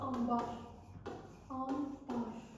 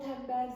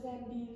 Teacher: Sonra üçüncü. Əgər sözün ortasında n samitindən sonra m, b gələrsə, n, m kimi tələffüz olunur.